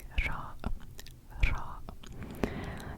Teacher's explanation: it is a rolling R so you're rolling your tongue when you're pronouncing ra ra it's kind of like the Spanish